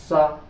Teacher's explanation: सा सा में हवा पूरा जोर मार रही दांतों में